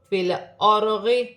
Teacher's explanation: را ساکن سے پہلے زبر را موٹی پڑھی جائے گی